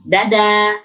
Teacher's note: ditekuk ujung lidahnya ke belakang menjadi seperti danya orang Indonesia.